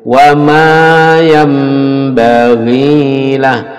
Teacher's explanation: Iqlab, bacaan iqlab. Nun ditukar mim.